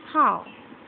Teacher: Closing diphthong. Gliding from A towards O, the lips are neutral in the beginning